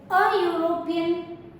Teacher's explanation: As I told you, don't look for the letter, instead look for the sound. So European, though it starts with a vowel letter, the sound is U, which is a consonant sound.